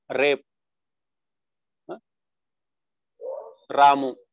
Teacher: in Indian ra you have your tip of your tongue you know vibrating